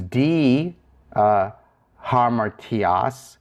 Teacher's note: If you use D hamartias, that's for this preposition, the iota can't aspirate, it can't can't add the H sound to it, so it remains the same.